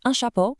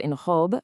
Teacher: The masculine un has a short nasal sound, while the feminine une has a rounded distinct oo sound followed by a soft n.